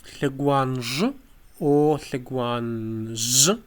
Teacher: For Abzakh they have Hleguanj or Hleguanz with the post-alveolar sound